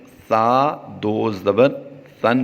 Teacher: سا کی ادائیگی کرتے ہوئے یاد رہے کہ ہم نے سیٹی کی آواز نہیں دینی، سیٹی آتی ہے سین اور صاد میں، تو یہاں پر سا دو زبر سن پڑھیں گے۔